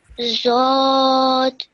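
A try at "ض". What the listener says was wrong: Okay. Bit more thicker. Dod.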